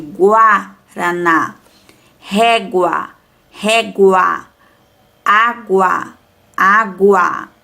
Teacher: Quando falamos palavras com guá ou guó, pronunciamos a vogal U